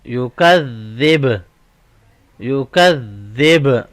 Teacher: stop sound میں با کے اوپر قلقلہ ہوگا